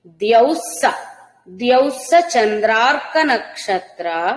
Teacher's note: విసర్గా సకారం తర్వాత సకారం కాబట్టి రెండు కలిపితే స కి సావత్తులాగా వినపడతాయి